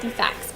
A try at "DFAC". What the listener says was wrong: DFAC, not DFAX, like where you take your children away.